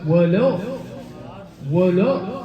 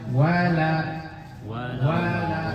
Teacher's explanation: Kesalahan yang sering terjadi di ayat 7 ini adalah lamnya dari wala itu jadi tebal.